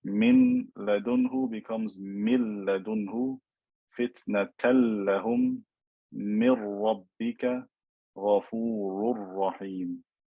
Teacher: In all these cases, I've completely merged the noon or the tanween into the next letter.